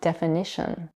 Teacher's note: For example, when the suffix ation is added to the verb define, the result is the noun definition, which is stress on the third syllable instead of the second one. In this case, stress shifted to the syllable before the suffix.